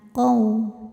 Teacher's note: Qau ada harfu lin. Sebab ada wau sukun yang sebelumnya harakatnya fathah. Maka kita bunyikan dengan melembutkan atau dilunakkan.